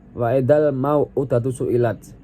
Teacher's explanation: lam dibaca jelas karena bertemu dengan huruf qamariyah yaitu mim · ada mad badal karena huruf wawu diikuti dengan hamzah dibaca panjang dua harokat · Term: alif lam qamariyah